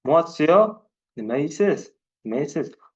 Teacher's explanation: savol ohangini berish uchun oxirini cho'zibroq aytishingiz kerak